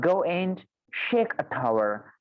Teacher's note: When this sh and t sound they're exchanged, so we are left with go and shake a tower. This sh sound, it comes here and the t sound comes here, right? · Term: slip of the tongue